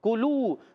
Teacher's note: تو پیارے بچوں اور مدنی چینل کے ناظرین، کلو کاف باریک ہے، یا قوف تھا، قوف پر تھا، موٹا تھا، زبان کی جڑ تالو کے نرم حصے سے قوف ادا ہوتا ہے، کاف ادا ہوتا ہے زبان کی جڑ تالو کا سخت حصہ